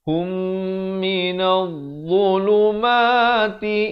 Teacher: Idgham di sini idgham mislan saghir, mim mati bertemu mim.